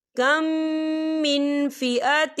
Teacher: میم ساکن ہے اور میم ساکن کے بعد پھر میم آ رہا ہے، تو یہاں پر ادغام شفوی ہو رہا ہے، تو ہم یہاں غنہ کریں گے